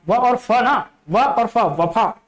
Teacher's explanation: व और फ का उच्चारण होता है दांत और ओष्ठ के माध्यम से, दांत और ओष्ठ के माध्यम से, मतलब कि दंतोष्ठ।